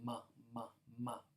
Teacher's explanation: labial consonants would be ones where these two lips are coming together · milk and mother both start with this labial sound, ma, ma, ma, where you can hear two lips coming together